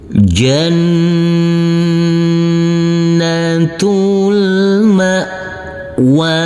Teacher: Huruf nun kita tekan, kita tahan, serta kita dungkan, karena ini adalah bacaan ghunnah.